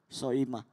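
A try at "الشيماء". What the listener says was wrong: Bukan Soima, Syaima. Nah itu pakai sod tuh, Soima pakai sod. Kalau ini pakai shin, Syaima namanya.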